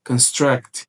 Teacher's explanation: caso seja pronunciado construct, com a ênfase maior na segunda sílaba ali, você tem que entender que isso aqui é um verbo